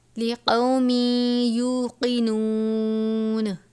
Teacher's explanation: تنوین کے بعد حرف یرملون میں سے یا مشدد ہے تو تنوین کو یا سے ملا دیں گے، لقومی پڑھیں گے اور غنہ کر کے پڑھیں گے. صرف لام اور را پر غنہ نہیں کرنا، باقی 4 حروف پر ہمیشہ غنہ کرتے ہیں.